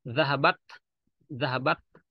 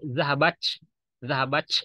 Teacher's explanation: Itu berbeda ya, bukan bahasa Arab. Tapi kalau bahasa Arab itu bakhorijul huruf ta itu harus ada sedikit keluar udara.